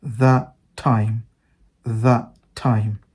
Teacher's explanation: ends with a consonant T and the second word starts with a consonant T both has the same sound you just delete one and become that time that time instead of that time you